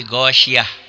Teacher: Tak marbutoh itu apabila dihentikan bunyinya berubah menjadi ha. Ghasyiyat, gak tak tapi ghasyiyah jadi ha.